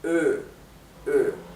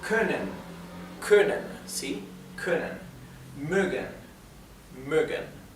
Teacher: la O umlaut, se pronuncia como un sonido intermedio entre una O y una U